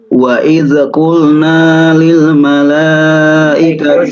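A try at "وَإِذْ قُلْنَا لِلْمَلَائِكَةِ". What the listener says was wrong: usahakan, mohon maaf huruf zal jangan sampai dikolkolakan. Wa idz qulna, ditahan ya. Wa idz qulna.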